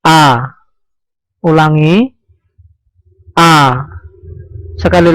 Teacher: Tempat keluar huruf hamzah atau makhraj huruf hamzah adalah al-halqa, artinya pada tenggorokan. Tempatnya di sini pada tenggorokan bagian paling bawah.